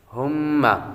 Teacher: یہاں پر میم مشدد ہے اور میم مشدد پر ہمیشہ غنہ ہوتا ہے۔